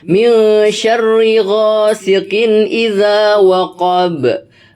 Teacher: Bacanya, cara membacanya itu samar-samar berdengung. Agak panjang karena dengungnya harus terdengar. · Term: ikhfa